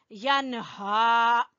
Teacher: مدہ کی وجہ سے، ٹھیک ہے، تلذی ینہا، ینہا، यहाँ पे नून पूरा अदा करते हुए हा को गले के आखिरी हिस्से से निकालेंगे , यनहा। अबदन, बा के ऊपर हल्का सा कलकला करेंगे, अबदन